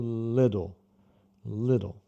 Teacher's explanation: Eu gosto de colocar às vezes com dois Ds, que representa o D rápido